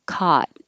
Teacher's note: for more general american english that most people are using it's just ah